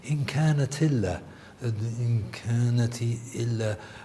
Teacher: what happens in Warsh is that you basically lose the hamza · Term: naql al-hams